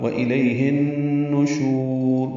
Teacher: ہا کو ان نشور کے نون سے ملا دیں گے، یہ غنہ ہوگا · نون کو معروف طریقے سے جلدی ادا کریں گے، شین کو لمبا کریں گے، را پر پڑھیں گے وقفاً.